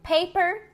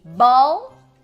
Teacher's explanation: bilabial a gente tem o p de paper e o bu de Ball